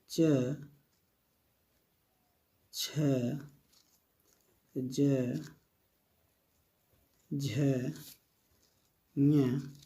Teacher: इन सभी का उच्चारण स्थान तालु है।